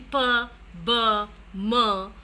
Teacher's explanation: when the two lips are used, like in p, b, m, they are known as bilabials because there are two lips there.